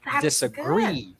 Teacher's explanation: so you're saying that disa is unstressed and gree is stressed